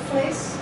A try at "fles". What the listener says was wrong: Fles. Se você falar fleis muito curto, muito abafado, vai sair fleis. Fleis é carne. Agora se você falar fles, fles. O F, fles. Porque o VEI E o F, né, às vezes tem muita dificuldade na pronúncia, parece muito.